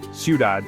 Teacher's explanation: the stress is naturally on the last syllable